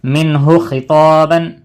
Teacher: نون کی آواز کو ظاہر کر کے پڑھنا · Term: اظہار